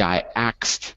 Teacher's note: If you switch it and you say I axed, that's kind of like an urban accent.